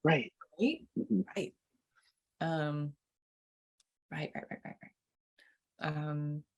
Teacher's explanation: right with that glottal stop at the end